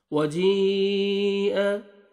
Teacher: हरूफ मद्दा के बाद हमजा उसी कलमे में आ रहा है तो ये मद्द वाजिब है, आपने लाजिम इसको 3 से 4 अलिफ के बराबर आपने एक्स्ट्रा खींचना है